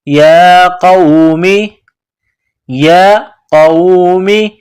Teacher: یا کے اوپر کڑا زبر, ایک الف کے برابر کھینچیں گے. قاف کو موٹا کرنا ہے.